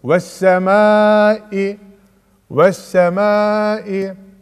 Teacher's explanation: Şu elifle lam okunmuyor. Direkt se'ye bağlayarak okunuyor. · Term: idgam-ı şemsiye